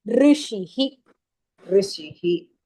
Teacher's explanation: You don't say re there. E sound doesn't come. It is rishihi. That r sound comes there.